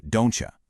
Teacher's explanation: Assimilation is blending sounds to make a new one, like don't you sounding like don't ya.